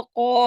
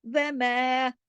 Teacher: جب قا کے ساتھ الف لگا الف موٹا ہو گیا، جب میم کے ساتھ لگا باریک ہو گیا